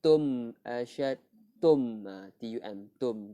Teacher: mim mati bertemu hamzah, izhar syafawi. Jelaskan mim mati ni. Tum asyad tum, tum, tum, tak ada tak ada dengung.